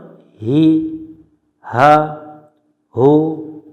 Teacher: হা অক্ষর হলকের প্রথম থেকে শক্ত করে পড়তে হয় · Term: ছোট হা